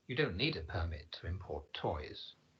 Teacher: because it's used as a verb to import toys, the second syllable should be the one stressed